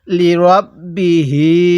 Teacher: লি রব্বিহি অনেকেই এটাকে লি রাব্বিহি র বা জবর রাব পড়ি যদি র জবর রাব পড়ি তাহলে কিন্তু পড়াটা সহি শুদ্ধ হবে না